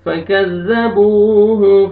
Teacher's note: فكذبوه, واو مدہ, با کو آپ نے کھینچنا ہے